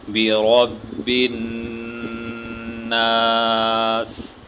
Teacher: را کو یہاں پہ پر کر کے موٹا کر کے پڑھیں گے۔